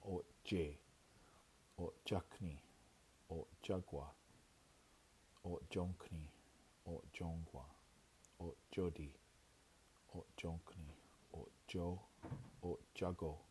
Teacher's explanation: O glottal T plus yakni becomes O jakni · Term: J sound